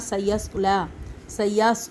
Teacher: سین کے اوپر سیٹی کی سی آواز آئے گی، صاد کے اوپر بھی آئے گی لیکن موٹی سیٹی والی. لام کھڑا زبر لا، وہی الف مدہ کی قائم مقام.